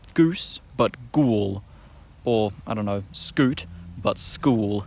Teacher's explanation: the goose vowel will back before an L so you get Goose but ghoul or I don't know scoot